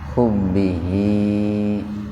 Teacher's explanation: jadi hi-nya dibaca panjang dua ketukan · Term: mad silah qasira